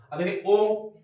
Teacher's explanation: ओ में होट गोल हो जाती है तो ओ अंदर से ओ निकल रहा है लेकिन अगर हो